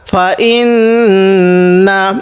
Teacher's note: ফা জবর ফা হামজা লাগবে এই নুনের সাথে ইন। এখানে আমরা নাকের বাঁশি দ্বারা গুণনা করব, কারণ মিম এবং নুনের উপর তাসদিদ হলে সেখানে গুণনা করতে হবে। নুন জবর না, ফা ইন না।